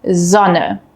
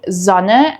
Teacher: So in German, we distinguish between two types of S sounds. We have a voiced S sound, which is a soft buzzing sound. This sound uses your vocal cords, similar to the English Z in zoo.